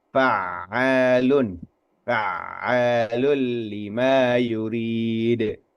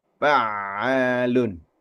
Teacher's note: Kita bacanya huruf ain tasdidnya itu kita baca secara lunak ini ya.